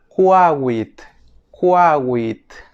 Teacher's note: Es la KW, que en fonética se le llama oclusiva velar sorda labializada.